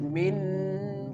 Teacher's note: You can feel when the mim make a connection with the noon the sound goes in your nose. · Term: ikhfa